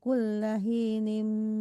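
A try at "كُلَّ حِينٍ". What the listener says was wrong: Kullahi itu Mandi Tati ha ya, hi ya. Jangan kullahi ya, berbeda artinya kalau dibaca ha besar. Coba lagi.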